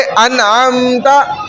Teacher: नून साकिना ज़ाहिर करके बिला गुन्ना, बग़ैर गुन्ने के पढ़ा जाएगा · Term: इजहार